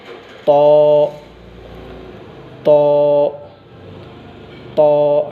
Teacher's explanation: जब तो पढ़ती उस वक्त हमारी ज़बान बाहर नहीं निकलना चाहिए। जैसा कि ज़बान की नोक को ऊपर के दांतों के जड़ों में लगाकर मोटी आवाज़ में पढ़ना